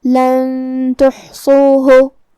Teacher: تا حروف الاخفاء میں سے ہے، لہذا ہمیں نون کو چھپاتے ہوئے اور غنہ کے ساتھ یہ حکم کو ادا کرنا ہے